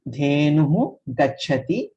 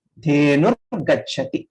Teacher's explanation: This Visarga changes to R. Dhenuhu Gachati will become Dhenur Gachati.